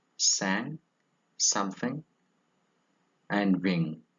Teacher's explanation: In. It is a voiced velar nasal.